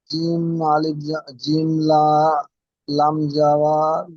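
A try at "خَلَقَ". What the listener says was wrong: জিম নয় খ, খ লাম জাবার খল, তারপরে কফ লাম পেশ, লামের সঙ্গে জোড়া নেই, যে লামের উপর আল্লাহ লামের উপর দেখেন তাসদিদ রয়েছে, তো আল্লাহ লামের উপর যেহেতু তাসদিদ, তার ফর সঙ্গে জোড়েন, কফ লাম পেশ, কফ লাম পেশ কুল, খল কুল, লাম খাড়া যাবার, তাহলে কি হবে খল কুল,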